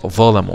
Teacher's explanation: يبقى قوم ظلموا، ظلموا، وبرضو مراعاة مخرج الظاء طرف اللسان مع طرف الثنايا العليا